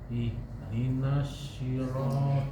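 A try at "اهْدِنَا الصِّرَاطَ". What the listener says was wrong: Ihdinas si bukan shi. Si. Enggak shi. Jangan anginnya jangan disebar. Kalau ihdinas shi ada huruf sendiri, huruf sya. Ini huruf so. Ihdinas si biasanya. Si.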